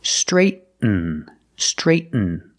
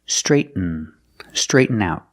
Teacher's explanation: When you have a T-N, use a stop T, straight, and then fall to the end sound.